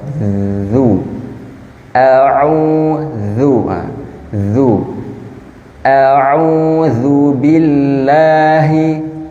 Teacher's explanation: terletak di ujung lidah bergesekan dengan gigi seri bagian atas dan bawah